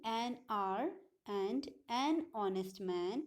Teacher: The word R and honest begin with the vowel sound, as the initial consonant H is not pronounced. We have not pronounced the initial consonant, which is H, and R, and honest.